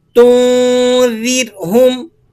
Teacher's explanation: اانذرتہم ام لم تنذرہم، را کو باریک کر کے ادا کریں گے۔ را ساکنہ ما قبل مکسور ہے اس لیے را کو باریک پڑھا جائے گا۔